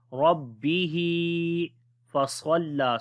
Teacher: Swad we read in heavy sound due to isti'la letter · Ra we read in heavy sound due to fatha sign on it. On the ba we make bit strong.